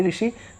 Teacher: ऋषि तो कहाँ से आता है, मूर्धा से इसकी ध्वनि निकलती है